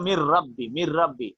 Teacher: Noon is not pronounced. Ra pronounced double. So it is idgham.